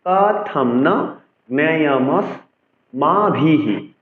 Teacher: অর্থাৎ বিসর্গের উচ্চারণ হ হয়েছে, হর সাথে কাট চিহ্নের উচ্চারণকেও জুড়ে উচ্চারণ করতে হবে।